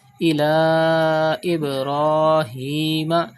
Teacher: There is Hamza after Khada Zabar in the next word. It is also Madde Munfasil. You have to stretch up to 5 harkat.